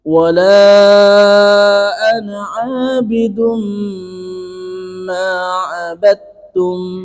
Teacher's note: Dhammatain bertemu dengan mim, itu idgham bi gunnah. Dan mim tasdid sendiri itu sifatnya sudah gunnah. Jadi dengungnya itu panjang.